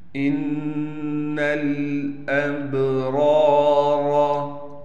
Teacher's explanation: یشہدہ المقربون ان الابرار، نون پر غنہ کریں گے تشدید ہونے کی وجہ سے، نون کو ڈائریکٹ اسلام سے ملائیں گے، با پر قلقلہ کیا جائے گا، را کے بعد الف ہونے کی وجہ سے را کو ایک الف کی مقدار کھینچیں گے، دونوں راؤ کو موٹا پڑھیں گے۔